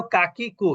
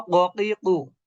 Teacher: এটা হলো কাকিকু, স্বাভাবিক উচ্চারণ বাংলা। আর এটা হলো ককিকু, জিহ্বার গোড়া থেকে।